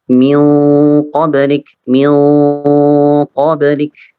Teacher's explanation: yang ikhfa yang nun sukun yang menghadapi huruf yang isti'la agak sedikit terangkat